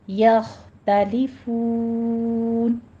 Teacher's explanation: یخ خا پر پڑھا جائے گا، یا باریک رکھنا ہے، تا بھی باریک رکھنا ہے، یوخ نہیں کہنا، تو بھی نہیں کہنا، ٹھیک ہے، یخ، یختلفون، آخر پہ واو مد ادا کرتے ہوئے مد عارض وقفی کر دیں گے اور 6 کاؤنٹ کرنا ہے۔